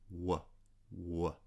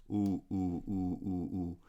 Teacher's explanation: Whereas the lips are the location of a labial glide. The two lips come near each other, and then there's a smooth movement